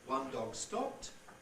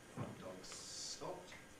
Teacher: the D is voiced because it's between voice sounds, but the G gets devoiced because it's followed by S.